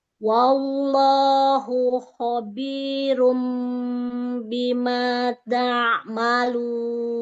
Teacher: Lafzul jalalannya ditebalkan lagi. Wallahu. Angkat pangkal lidahnya.